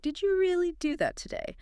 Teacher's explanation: If you want to express strong surprise, you must use a rising intonation at the end of the question, like, "Did you really do that today?" The rise on today shows the surprise.